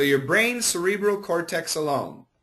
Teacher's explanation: we have a z sound and an S sound so if we say it fast we can combine